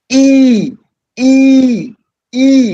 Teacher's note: the front of the tongue is raised as high as it can possibly go go without actually touching the roof of the mouth so you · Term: long e